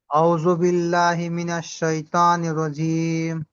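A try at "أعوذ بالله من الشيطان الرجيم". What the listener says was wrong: আউ, এই আউ, এখানে কিন্তু আউ আইন আছে। আউ, আপনি একটু যদি খেয়াল করেন ইনশাল্লাহ সুন্দর হবে। আউযু, আউ।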